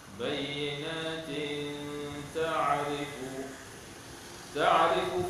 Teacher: tanwin pada bayyinatin bertemu dengan ta ikhfa hakiki ya. Ikhfa hakiki dengan dua harakat.